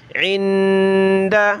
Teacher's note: نون ساکن ناک میں آواز پیدا کریں گے